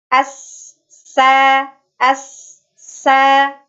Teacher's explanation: dan yang terakhir sifat yang dimiliki oleh huruf sin ini adalah sofir atau berdesis.